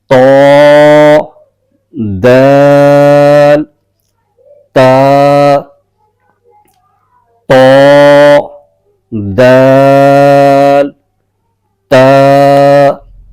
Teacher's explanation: जबान की नोक उठकर ऊपर के दांतों की जड़ को लगे और वहां से तीन हर्फ आदा होंगे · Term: हरूफ तया